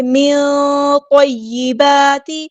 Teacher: نون ساکن کی آواز کو ہم یہاں پہ چھپا دیں گے، اخفا ہو رہا ہے، پور اخفا. من طیبات، تو ہمارا ہیوی ہے پورا ادا کریں گے.